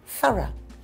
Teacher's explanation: I say eh – just a little schwa sound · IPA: ə